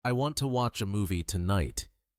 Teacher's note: Notice how to and a almost disappear. · The stressed words are want, watch, movie, tonight.